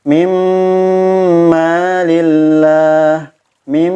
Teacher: Ketika bertemu dengan huruf mim, mimma lillah, mim, bukan hanya sekedar memasukkan nun mati pada huruf mim, tapi ada dengungnya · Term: idgham bigunnah